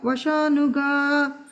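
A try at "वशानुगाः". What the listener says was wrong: And the Vashanugaha, this is Visarga there.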